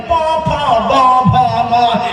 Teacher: প আর ম দুটো দুই ঠোঁট থেকে উচ্চারণ হয়, প ফ ব ভ ম একই লাইনে উচ্চারণ করে দেওয়া হয়েছে।